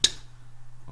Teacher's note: I think it is, because t, you really have to open your mouth, you have to have it explode, you have to have an aspiration